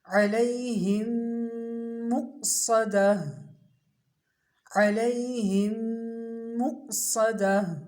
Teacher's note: حمزہ کی آواز جھٹکے والی، صاد کی آواز سیٹی والی اور موٹی